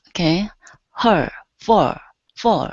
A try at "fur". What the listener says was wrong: So what you're doing, you're saying fur, and you're pronouncing an oo right before it. You're saying fur. Instead of fur, it's fur. Okay, don't open the mouth that much. So you don't want to say for, but just fur.